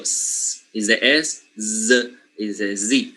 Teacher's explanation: For example, the s and z, okay, they are made or pronounced exactly the same, except for this little feature, which is the voicing